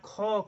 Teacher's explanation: को बोलेंगे तो पेट पे हाथ रख के देखिएगा, को में कम समय लगता है, जोर पड़ता है। ख कहेंगे हवा अधिक लगेगी और पेट पे अधिक जोर पड़ता है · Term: महाप्राण